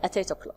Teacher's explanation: at ends with consonant and here eight starts with a vowel we can link them we no need to stop we can link them together and